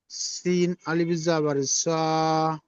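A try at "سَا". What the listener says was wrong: হ্যাঁ, তোমার উল্টো হয়ে যাচ্ছে, হ্যাঁ। এটা সিন হবে, সিন, আর এটা শিন। হ্যাঁ, এটা হবে শিন, আর এটা সিন। আলিফ জবর সা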